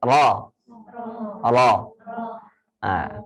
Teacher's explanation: Keadaan bibir itu terbuka, bukan bundar. Kalau berubah menjadi o, bibirnya berubah jadi bundar, menjadi ismam.